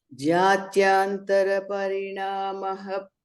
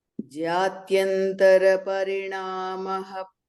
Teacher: Initially, in the beginning, it is Jatyantara. There's no elongated vowel.